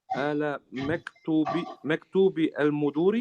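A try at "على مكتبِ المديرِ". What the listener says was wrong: Not maktubi, it's maktabi. المديري.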